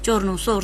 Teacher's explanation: છે ચોરનું સોર થાય છે તો ત્યાં આગળ શું થયું કે સ્પર્શ સંઘર્ષી ધ્વનિ હતું એનું માત્ર સંઘર્ષી ધ્વનિ બને છે